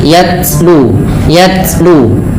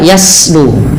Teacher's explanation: Sifat huruf ta yang paling menonjol dalam ketika dia sukun adalah sifat syiddahnya, yaitu tertahannya suara. Dan langkah kedua yaitu adalah sifat hamasnya, mengalirnya nafas.